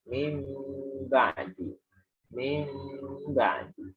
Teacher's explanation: Namanya iqlab, seperti mim ba'di ya. Mim ba'di itu juga tidak hanya nunnya berubah jadi mim, tapi dia ditahan dulu.